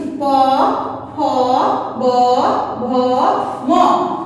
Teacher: দুই ঠোঁটের মধ্য দিয়ে, দুই ঠোঁট দিয়ে যে ধ্বনি স্পর্শ করা হয় সেগুলো হলো ওষ্ঠধ্বনি · ওষ্ঠধ্বনি আমরা সবাই বুঝতে পারছি, ওষ্ঠ অর্থ হলো ঠোঁট, তার মানে যে বর্ণগুলো দুই ঠোঁটের স্পর্শে উচ্চারিত হয় তাকে আমরা বলবো ওষ্ঠধ্বনি